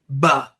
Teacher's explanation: is coming together lips are popping apart we now identified that when you make the sound for a b your lips have to come together and pop apart